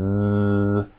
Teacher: The letter S is different than Z, only in the fact that your throat vibrates with a Z sound, Z, as opposed to S, and you can feel that. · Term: voiced